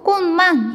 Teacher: 그래서 비음의 힘이 굉장히 세. 이 비음 때문에 앞에 오는 디귿이 영향을 받아서 디귿이 니은으로 발음되게 돼요. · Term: 비음화